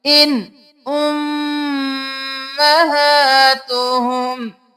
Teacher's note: آگے حروف حلقی میں سے حمزہ آ گیا، ہم اظہار کر کے پڑھیں گے